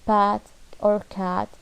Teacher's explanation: The position of A, short, low, front spread vowel